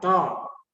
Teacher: ટ ને બોલવા માટે આપણે આખા મોટા મૂર્ધન્ય મોઢાનો ઉપયોગ કરવો પડે. દંત્ય દાંત દ્વારા ત, એમાં આપણે દાંત દ્વારા ઉચ્ચારણ કરવું પડે